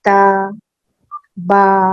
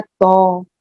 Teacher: جیسے کہ میں پڑھ رہی ہوں تا, پہلے تو آپ ہونٹ ایسے کر لیجیے, اسپریڈ کر لیجیے جیسے آپ مسکرا رہی ہیں, اور پھر تا کو ادا کیجیے, تا با, اور اس کے بعد تو, ایک دم اسٹریٹ آپ کا فیس رہے گا, لپس اسٹریٹ رہیں گے, اور وہ ہیوینس آ جائے گی, اس میں زبان پیچھے کو اٹھے گی, استعلا آ جائے گا.